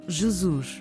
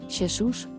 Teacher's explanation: while Z is voiced in Portuguese, it's unvoiced both in Galician and Spanish